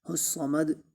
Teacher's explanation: الصمد صاد کو بھی موٹا پڑھیں گے اور اس میں سیٹی کی آواز بھی آنی چاہیے، کیونکہ یہ موٹے حروف میں سے بھی ہے اور سیٹی والے حروف میں سے بھی ہے۔